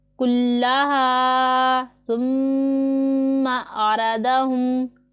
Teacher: سا میں سیٹی کی آواز نہیں نکالیں گے، میم مشدد ہے، اس میں غنہ ہوگا، اور غنہ والے حرف کو بھی ہم 1 الف کی مقدار کے جتنا کھینچ کے لمبا کر کے پڑھتے ہیں۔